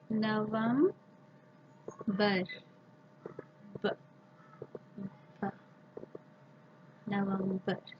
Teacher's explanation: The tip of the tongue is flapping up and down.